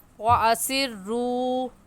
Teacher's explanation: واو مدہ کو ایک الف کے برابر کھینچ کر پڑھیں گے، نہ اس سے کم اور نہ ہی اس سے زیادہ